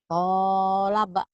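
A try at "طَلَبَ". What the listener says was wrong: Kolaba. Mana kolaba Bu? To. Tolaba. Kedengarannya kayak kolaba ya. Tolaba.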